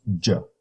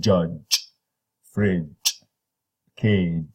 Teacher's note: So now we have a voiced, palatal, affricate.